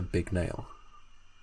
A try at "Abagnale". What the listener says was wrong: Yeah, but with an A. Like you've got a bag nail.